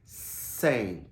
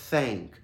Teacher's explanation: São dois sons fricativos, sibilantes aqui, mas eles estão sendo feitos em lugares diferentes na boca